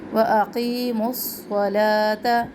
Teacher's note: صوت موٹا حرف ہے, صوت میں سختی, سیٹی اور موٹا بھی ہو. لام کے اوپر کھڑا زبر الف مدہ کے قائم مقام.